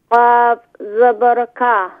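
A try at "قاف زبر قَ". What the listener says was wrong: qaf is pronounced more full mouth please qaf zabar ق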